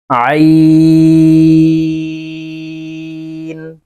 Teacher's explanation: আইন হালকের মধ্যখান থেকে চাপ দিয়ে চার লিফ টান দিয়ে উচ্চারণ করতে হবে